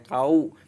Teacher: Wawu sukun itu suaranya itu bunyinya u bukan o. Jadi jangan kau, tapi dibacanya kau, bibirnya agak mencucu.